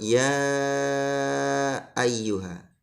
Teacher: Yang pertama, kita harus membaca panjang lafadz ya ayyuha. Ya, tidak boleh ya ayyuha, kurang panjang. Panjangnya 2,5 alif. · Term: mad jaiz munfasil